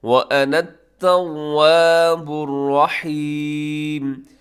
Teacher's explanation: الرحیم کے اندر را موٹا پڑھا جائے گا اور ہا کا آپ نے خاص طور پہ خیال رکھنا ہے۔